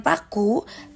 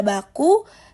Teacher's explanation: Sedangkan pada baku, bibir juga tertutup tapi ada getaran di pita suara karena B adalah bunyi bersuara